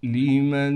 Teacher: نون پر اخفا یعنی غنہ کیا جائے گا